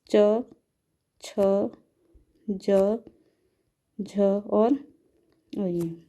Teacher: जो च वर्ग में वर्ण आएंगे वो कहलाते हैं तालव्य